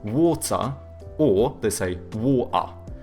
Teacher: Whereas like the British, they tend to have either hard T's or they do like the glottal T, so but then they do a schwa instead of pronouncing the R